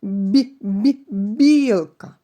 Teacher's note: при вимові звука б губи стиснуті дещо витягнуті вперед ротова порожнина закрита струмінь видихуваного повітря прориває перешкоду це приголосний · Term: звук б